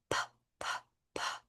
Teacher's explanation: And that's because with the p-p-p, your voice box, your larynx is staying open and the air is just going through it.